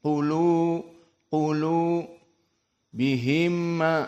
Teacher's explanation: mim sakinah bertemu dengan mim al-mutaharrik dinamakan idgham mutamatsilain · dan qaf di sini dalam keadaan tafkhim